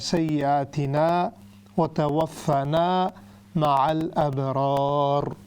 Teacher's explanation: आखिर में जो रा है वो भी हैवी होगी